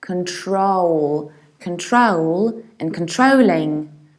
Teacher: I reduce the very beginning. Kun, I don't say con, I don't say con, I say kun. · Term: reduced beginning